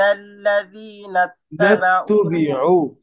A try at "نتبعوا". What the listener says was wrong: نتبعوا যেন হামজা না হয়ে যায় نتبعوا